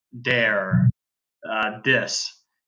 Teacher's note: Brazilians pronounce the th sound as a D dare dis instead of really focusing on getting their tongue between · you will hear Brazilians pronounce the th sound as a d